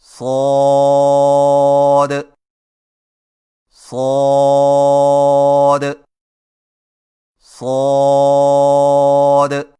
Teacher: صاد کی ادائیگی میں زبان کی نوک کو ثنایا سفلی کے کناروں سے مضبوطی سے لگا کر اور زبان کے پچھلے حصے کو تالو کی طرف بلند کرتے ہوئے موٹی اور سیٹی جیسی آواز میں پڑھیں، یعنی صاد صاد صاد۔ · صاد کو ادا کرتے وقت شروع والی آواز کو باریک نہ کریں، یعنی صاد صاد صاد، اور یہ درست نہیں۔